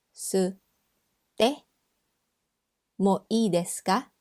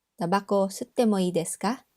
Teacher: Verb te mo ii desu ka with a rising intonation.